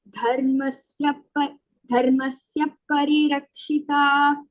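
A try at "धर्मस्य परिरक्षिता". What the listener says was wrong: Dharmasya Parirakshita. I don't know. I'm hearing an extra ip there. Dharmasya Parirakshita. So in this dhata, that is Mahapranah. And then dharmasya, that is also Mahapranah.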